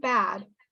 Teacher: When I'm pronouncing bat and bad, you can hear that bad is pronounced longer. Bat is very short, bad is very long. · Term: vowel length